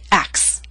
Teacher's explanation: three consonant sounds c t s these are voiceless sounds and we drop the middle one which happens to be a t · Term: omit the T